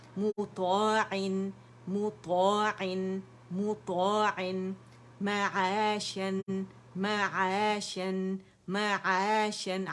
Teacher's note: لیکن اس میں آپ نے زبان کی جڑ نہیں اٹھانی باریکی سے، یعنی نہیں کرنا آپ نے، بالکل سافٹلی زبان کی جڑ کو نیچے رکھ کے کرنا ہے، کیونکہ یہ سافٹ لیٹر ہے عین